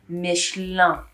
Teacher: The N. The French would say that they're pronouncing the N, but it's very soft. So at the end, it comes up Michelin.